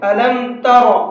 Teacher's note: ألم تر، یہ را ہے، را کے اوپر جب زبر ہوتا ہے تو اس کو پر کر کے پڑھتے ہیں، منہ بھر کے پڑھتے ہیں، ألم تر، اس طرح سے۔